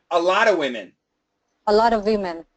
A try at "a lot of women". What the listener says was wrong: A lot of women. No V. No V. You know do you know the pronunciation rule? Of consonant, we can cancel the V sound, okay? Yes, and actually, when we have the word lot of, many Americans actually spell it like that.